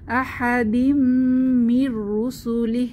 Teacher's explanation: এখানে তানভীনের পরে মিম এসেছে তাহলে গুন্নাহ সহ মিলিয়ে পড়বো